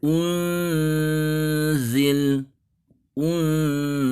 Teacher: dengan bunyi n yang sudah bersiap di huruf zai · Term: ikhfa